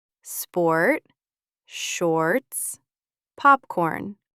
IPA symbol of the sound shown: ɔr